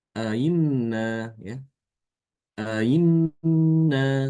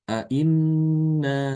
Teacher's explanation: Kalau hamzah yang kedua harokatnya fathah seperti di sini contohnya inna, ya. Ya, maka hamzah yang kedua ini dibaca antara, ya, hamzah dengan ya, ya. Antara i dengan yi.